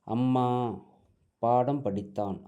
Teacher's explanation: மகர மெய் எழுத்து தனக்குரிய அரை மாத்திரை அளவில் முழுமையாக ஒலிக்கிறது